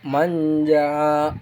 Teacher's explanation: Lalu kemudian ifa terjadi pada kata manja, nun mati bertemu dengan huruf ikhfa, dibaca samar dengan mendengung pada huruf nun sebelum bertemu dengan ja